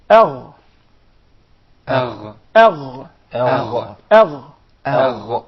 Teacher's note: So Adna al-Halq, the nearest part of the throat, the nearest to the mouth, is the makhraj and the articulation point for 2 letters, the Ghayn and the Kha. So the Ghayn comes from the closest part of the throat to the mouth.